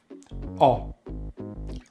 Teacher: opening the jaw quite a bit, rounding the lips and pushing the lips forward in the mouth and keeping the tongue at the back of the mouth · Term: short vowel sound O